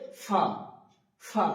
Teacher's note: ফা উচ্চারণ করার সময় উপরের দাঁত নিচের ঠুটের সঙ্গে লাগিয়ে। উপরের দাগ নিচের ঠোটের সঙ্গে লাগিয়ে উচ্চারিত হবে ফা। · উপরের দাঁত নিচের ঠোঁটের সঙ্গে লাগিয়ে উচ্চারিত হবে ফা। ফা, এবং একটা বাতাস বেরোবে মুখ থেকে, যখন আমি বলা শেষ করব শেষের দিকে ফা, একটা বাতাস বেরিয়ে যাবে।